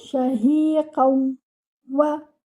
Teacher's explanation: You will merge the noon sakina, which is hidden in this tanween, into the waw. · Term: adgham